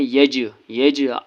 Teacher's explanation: جیم حرف قلقلہ ہے اس لیے جیم پر قلقلہ کرنا ہے